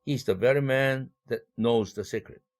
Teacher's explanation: 이럴 때 관계대명사 that 앞에 멈춤이 있다